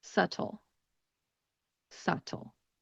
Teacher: I pronounce it with a very Californian accent. And I don't really pronounce the T in the word.